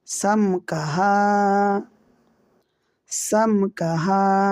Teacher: বামে কাফ মিম সাকিনের বামে কাফ থাকলে ইজহারে স্বাভাবিক হরফ হয় মিম সাকিনকে গুন্না ছাড়া স্পষ্ট করিয়া পড়তে হয়